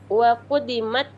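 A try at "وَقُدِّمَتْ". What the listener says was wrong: Wa quddimat. Tasdid.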